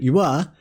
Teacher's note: the labialized palatal approximant